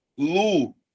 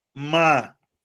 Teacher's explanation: você percebe que a penúltima sílaba, tanto em Lúcia quanto em Mábia, são as minhas sílabas tônicas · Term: paroxítonas